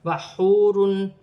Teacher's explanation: یہاں پر ایک الف کی مقدار کھینچ کر بھی پڑھا جائے گا. واو ساکن سے پہلے پیش ہے تو واو مدہ بنے گی، اسے ایک الف کی مقدار کھینچ کر پڑھا جائے گا، واو کی صورت میں زبر گر جائے گی اور نون ساکن ہو جائے گی.